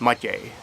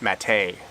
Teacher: the accent is on the first syllable like all words are in Czech